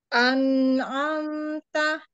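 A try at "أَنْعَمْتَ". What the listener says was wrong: Terlalu panjang ya tadi ya. Yang kedua terlalu panjang. An'amta. An'amta.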